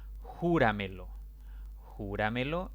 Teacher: júrame lo jura me lo es una palabra de cuatro sílabas la mayor intensidad de voz está en la sílaba antes de la antepenúltima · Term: sobre brújula